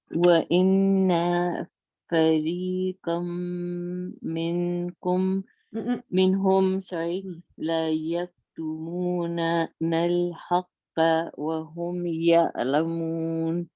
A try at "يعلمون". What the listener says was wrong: آئین جو ہے نا میں نے کہا تھا میں اینڈ میں روکوں گی. آئین میں نا تھوڑا سا جیسے ایک جھٹکا ٹائپ کا آ رہا ہے. آئین کی آواز نا تھوڑی کنٹینیو ہونی چاہیے.